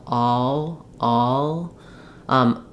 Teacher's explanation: If I'm saying always, as long as I have the sound of this sound of all, which is basically an ah and then a bit of an or a schwa sound, and an L. So the dark L is kind of a schwa and L